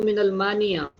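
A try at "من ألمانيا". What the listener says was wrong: मिन अल्मानिया. मिन अल्मानिया. ये अलिफ असली है, इसमें अलिफ लाम तारीफी नहीं है. अल्मानिया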